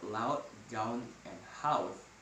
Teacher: Since this is an open vowel, a glide to u would necessitate a large movement and tongue often does not reach the U position.